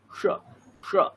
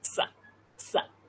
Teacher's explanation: মূর্ধন্য স যেটা সেটা হচ্ছে শ শ, দন্ত্য একদম সোজা সা সা, আমরা সিটে দিই